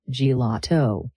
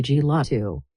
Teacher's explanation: It starts like the word jelly, G, then the middle part gets all the stress and power, and the A sounds like ha, la.